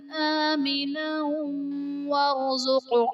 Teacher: آمنا ورزق میں نون پر دو زبر کی تنوین، تنوین کے بعد حروف جرملون میں سے واو آ رہا ہے، تو یہاں پر ادغام مع الغنہ کا قاعدہ ہوگا، یعنی تنوین میں ہم غنہ کر کے پڑھیں گے